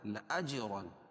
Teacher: جیم پر قلقلہ کیونکہ یہ حروف قلقلہ میں سے ہے اور اس پر جزم ہے